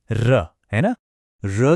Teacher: र की आवाज आती है दांतों के ठीक पीछे वाले हिस्से यानी मसूड़ों से जिसे व्याकरण में वर्त से कहते हैं। · जब हम र बोलते हैं तो हमारी जीभ की नोक मसूड़े पर बहुत तेजी से कांपती है जैसे लुढ़क रही हो। बस यही तेज कंपन र की वो खास रोलिंग साउंड पैदा करता है। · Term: लुंठित वर्ण